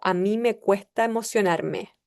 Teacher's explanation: la aspiración de la s, el final de sílaba